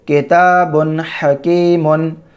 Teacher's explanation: نون کی آواز کو ظاہر کر کے جلد پڑھیں گے بلا غنہ کے